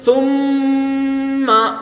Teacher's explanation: اور اس کے بعد بتایا کہ گناہ کی مقدار 1 الف کے برابر ہے، 1 الف کے برابر ناک میں آواز کو روکیں گے